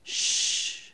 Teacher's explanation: the sibilent sound which is produced by forcing air out through your teeth